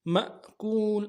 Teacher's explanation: ماکول ایسا نہیں پڑھنا چاہیے، جھٹکا ہے کیونکہ الف کے اوپر ساکن ہے. مأکول اگر الف خالی ہوتا پھر کھینچتے، ماکول کھینچتے تو ایسا نہیں کرنا چاہیے، جھٹکا دینا چاہیے.